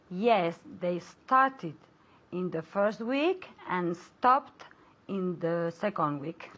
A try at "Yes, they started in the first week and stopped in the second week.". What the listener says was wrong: Very good, okay.